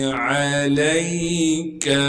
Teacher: عین کو صاف کر کے گلے سے نکالیں گے، لام کو آگے یا ساکن سے ملا دیں گے، کاف کو باریک کر کے پڑھیں گے۔